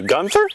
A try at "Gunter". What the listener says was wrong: It's Gunter, no H. Trust me, it's Gunter.